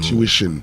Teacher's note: So the stress is actually on the second syllable.